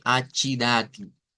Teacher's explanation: las T en el portugués es interesante porque no suenan como tes del español suenan como chs por lo menos en el portugués de Brasil